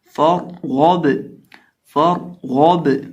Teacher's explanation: اور اسی طرح سے یہاں را ہے تو را کو ہم پر کریں گے کیونکہ را ساکن سے پہلے زبر ہے، را ساکن ہو اور را ساکن سے پہلے زبر ہو یا پیش ہو تو را کو پر کیا جاتا ہے، اور اگر را ساکن سے پہلے دیر ہو تو اس کو بریک کیا جاتا ہے۔ اب یہاں را ساکن سے پہلے زبر ہے تو اس کو پر کریں گے، اور غین حروف مستعلیہ میں سے ہے تو اس کو بھی پر کریں گے · اب یہاں را ساکن سے پہلے زبر ہے تو اس کو پر کریں گے، اور غین حروف مستعلیہ میں سے ہے تو اس کو بھی پر کریں گے اور با کو ہلا کر پڑھیں گے